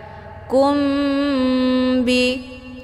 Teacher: jadi bunyi mim ini menjadi agak samar-samar kum hukum bacaan Ikfa Syafawi berdengung [Musik] ahunirullahi yatikum Bih unzur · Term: ikhfa syafawi